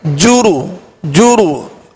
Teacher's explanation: جیم اور را پر پیش ہے، پیش کو بغیر کھینچے بغیر جھٹکا دیے معروف پڑھیں گے، ہونٹوں کو گول کر کے